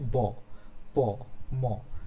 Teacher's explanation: consonant sound যেমন বলছে ব, প, ম, তাহলে ব অথবা প অথবা ম যখন আমি বলছি আমাদের দুটো ঠোঁট লেগে যাচ্ছে, অর্থাৎ হচ্ছে বাইলাবিয়াল মানে হচ্ছে দুটো ঠোঁট যখন লেগে যায়